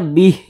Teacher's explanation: kita berhenti tepat di huruf ha maka kita baca Bih begitu kita matikan huruf h-nya · Nah, ini namanya adalah mad silah qasirah. Jadi mad silah qasirah itu apabila kita berwakaf atau berhenti, maka mad silah qasirahnya itu dia gugur, tidak dibaca panjang. Kita berhenti tepat di huruf H, maka kita baca bih, begitu.